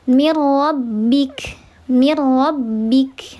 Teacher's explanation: Karena ada nun sukun ketemu huruf ro, maka dia dibacanya dileburkan saja, tidak dibaca ghunah. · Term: idgham billah ghunah